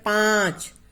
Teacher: मुंह से भी और नाक से दोनों से आ रही है, इसलिए चंद्र बिंदु।